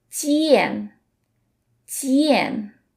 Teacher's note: In J, we don't let out the puff of air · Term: Chinese J sound